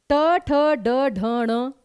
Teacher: ट वर्ग उसका पूरे के पूरा का उच्चारण स्थान होता है मूर्धन्य